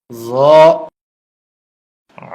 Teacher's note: জ, এই হরফটিও 1 আলিফ পরিমাণ লম্বা হবে, জিহ্বার আগা উপরের দাঁতের আগায় লাগবে, নরম হবে, মোটা হবে